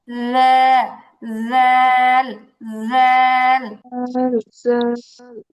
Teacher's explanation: জিহবাটাকে একদম নরম করে জিহবার আগা উপরের দাঁতের আগার সাথে লাগাতে হবে নরম করার ট্রাই করতে হবে।